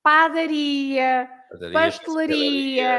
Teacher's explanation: those words that finish with ia, you also stress at the end, although they don't have any accent, but it's at the end.